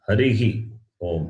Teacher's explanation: So when you say, the right way of addressing is Harihi Om. The Visarga must be pronounced, not Hari Om. Visarga should not be cut.